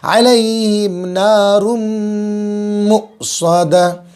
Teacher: حمزہ پر جزم آئے تو حمزہ کو جھٹکے کے ساتھ پڑھیں گے